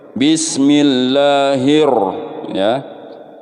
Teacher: namanya alif lam syamsiah Hai Secara garis besarnya cara membacanya ini alif lam nya ini tidak berfungsi atau dianggap tidak ada atau dihilangkan